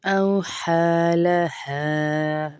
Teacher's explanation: یہ ہا اس لیے لمبا کر رہے ہیں اس کو کیونکہ الف مدہ ہے ساتھ میں